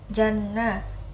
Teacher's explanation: Wa idzal al-ja ini dibaca al-qamariyah karena dia alif lam yang berharokat sukun. Janna, nunnya ini dibaca gunnah karena dia dengung sebab ada tasydid